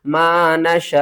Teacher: वक्फ की सूरत में हमज़ा के ऊपर पेश ये भी ख़त्म हो जाएगी, वाव भी ख़त्म हो जाएगा और अलिफ भी ख़त्म हो जाएगा। हमज़ा जस्ट साकिन होगी और हमज़ा को झटके के साथ पढ़ेंगे · मद्दे मुत्तसिल है, 5 अलिफ के बराबर खींच कर पढ़ेंगे